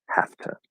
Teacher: we might spell it have to with an a at the end but it's pronounced as a schwa